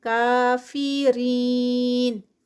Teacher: نو change, کافرین، کا جو ہے وہ 2 کاؤنٹس پہ، اور رین پہ یہاں پر یا مدہ ہے تو یہ سٹاپ پر 4 کاؤنٹس اس کا اسٹریچ ہوگا